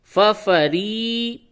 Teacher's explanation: یہ را کے نیچے زیر ہے، باریک پڑھیں گے